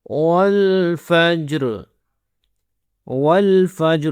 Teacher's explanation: لام کے اوپر ہمارے پاس ہے سکون کا سائن، تو واو اور لام آپس میں کنیکٹ ہوں گے